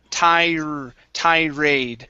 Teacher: i pushed the tongue down on that r